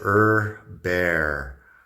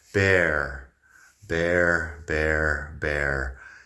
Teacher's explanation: Bear de oso tiene la R inglesa, que, bueno, en inglés americano sí que pronunciamos la R después de una vocal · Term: la R americana